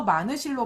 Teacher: 여기에서 마늘실 같은 경우도 히읗이 탈락되고 얘가 없어지고 그 다음에 뒤에 모음으로 시작하는 말이 오니까 니은이 연음이 되어서 뒤 음절의 첫 소리로 옮겨가게 돼요. 그래서 마늘실로 발음이 되는 거죠.